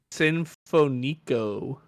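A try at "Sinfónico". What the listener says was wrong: You put the accent on the wrong. There's literally an accent above that. Niche Sinfonico. Yeah, that's what the little accent is, where you put the stress.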